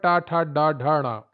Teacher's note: टा वर्ग आता है मूर्धा में, तालु का अगला भाग। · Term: मूर्धन्य